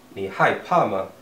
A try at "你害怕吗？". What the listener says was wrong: Yeah.